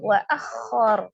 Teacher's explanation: Ro sukun sebelumnya fathah dibaca juga dengan tebal ya, tafkhim. Jadi ro-nya di sini tebal.